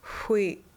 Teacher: pronounced by rounding the lips like with the W, but blowing. To get the idea, pretend you are blowing out a candle. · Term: XW